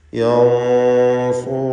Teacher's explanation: സാക്കിനത്ത നൂനിനെ ഇഖ്ഫ ചെയ്ത് മണിച്ചുകൊണ്ട് ഉച്ചരിക്കുമ്പോൾ ആ മണിക്കലിലും തഫ്ഖീം വേണം. യൻസുറൂനകും എന്ന് പറയണം.